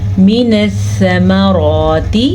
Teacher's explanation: سا نرمی سے پڑھیں گے، را کو پر پڑھیں گے، را کے اوپر کھڑی زبر ہے، تا کو لمبا نہیں کریں گے، تا کے نیچے زیر ہے.